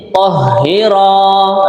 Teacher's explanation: rohnya ini panjang, 2 harokat karena ada alifnya ya